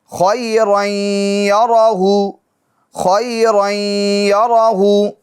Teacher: گنہ بھی کریں گے ادغام کے ساتھ ساتھ. رائیں، ناک میں آواز لے جائے گے، رائیں.